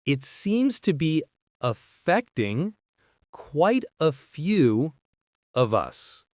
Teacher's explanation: Stresses on seems, fect in affecting, quite, and few.